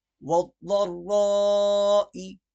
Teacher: والضراء کی ضاد بھی موٹی پڑی جائے گی اور را بھی موٹی پڑی جائے گی